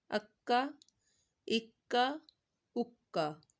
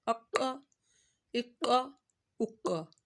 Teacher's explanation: یہ حروف مستعلیہ کا موٹا قوف آ گیا، اس کو موٹی ساؤنڈ میں پڑھنا ہے